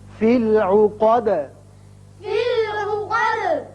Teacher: آیت ختم ہو رہی ہے دال ساکن کر دیں گے، دال کی صفت قلقلہ ادا ہوگی